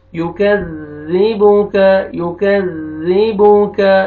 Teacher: काफ को बारीक करके पढ़ना है और ज़ाल के साथ मिलाना है , ज़ाल को भी नरमी से अदा करेंगे, जोर से नहीं